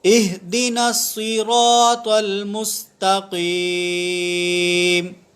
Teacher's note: صراط کے اندر، لفظ صراط کے اندر 100 حروف مستعلیہ میں سے ہے. صاد بھی پر ہے، را بھی پر ہے، اور اس کے بعد جو تو ہے وہ بھی پر ہے